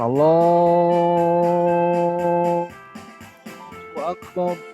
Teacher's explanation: Jadi harus sesuai lafaz Allah itu mad tabi'i, jadi panjang 2 harokat saja, tong panjangan Allahu Akbar.